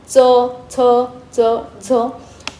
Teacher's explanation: त्याला दंत प्लस तालू याचा संपर्क येतो म्हणून आपण त्यांना दंत तालव्य वर्ण असे म्हणतो अशा प्रकारे उच्चार